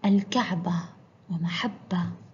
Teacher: في المقطع الأول حرف التاء وعند الوقف ينطق هاء